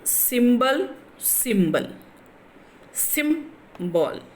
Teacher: because symbol is a noun, so then the stress is in the first syllable